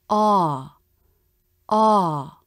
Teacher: also notice how the tongue pulls back in the ah vowel in a stressed syllable this vowel has the up down shape of stress